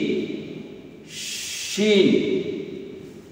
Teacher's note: মুখে ছড়িয়ে যাবে প্লাস বাতাস রানিং থাকবে, চলমান থাকবে শিন